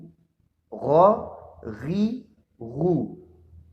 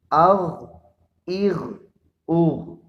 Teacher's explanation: ایک تو یہ کہ ان کو موٹا پڑھیں گے، اور دوسرا یہ کہ حلق کے منہ کی جانب والے حصے سے اس کو ادا کریں گے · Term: ادنائے حلق